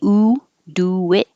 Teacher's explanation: when you say ooh do it and your lips go rounded to unrounded it will make a w